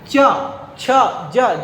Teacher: जो जीभ है तालु को स्पर्श कर रहा है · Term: तालव्य वर्ण